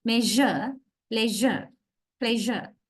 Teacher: It has to have a weight. Weight means we are voicing. We voice sh sound. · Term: j sound